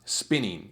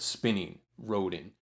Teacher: spin gets the accent and uh you know the n-i-n-g part isn't accented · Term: feminine endings